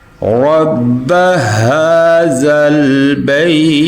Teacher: اور یہ جو را ہے اس کو ہم پر پڑھیں گے